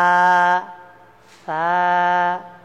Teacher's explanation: সা বলতে গেলে জিহ্বার আগাটা একটু বের করে আপনাকে সা উচ্চারণ করতে হবে।